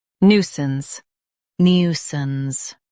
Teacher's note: Stress new and keep sance soft.